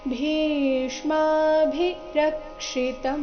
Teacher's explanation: ಇಲ್ಲಿ ಭಿ ಮಹಾಪ್ರಾಣ ದೀರ್ಘ ಅದರ ನಂತರ ಷಟ್ಕೋನದ್ದು ಷ ಮತ್ತೆ ಪೂರ್ತಿ ಮ ಬಂದಿದೆ